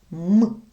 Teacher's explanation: м ми вимовляємо із зімкненими губками і наше повітря долає перешкоду Тому це приголосний звук